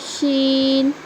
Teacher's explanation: زبان کا بیچ والا حصہ جب اوپر کے تالو میں لگے گا تو نکلے گا جیم، اور وہیں سے بڑی شین بھی نکلیں گی. اور شین کی آواز بھی سختی سے ادا ہوں گی، لیکن اس کی آواز میں سیٹی کی بھی آواز آئیں گی. جیسے جیم جیسے سختی کے ساتھ ادا کر رہے تھے جیم، ویسے شین.